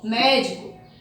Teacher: Porque a sua sílaba forte é a antepenúltima. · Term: proparoxítona